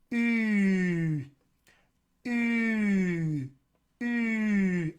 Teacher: I could have the very front of my dorsum arched as high as it'll go, just about as far forward as it can go. And the tongue is about as close to the roof of the mouth as it can be without being closed off.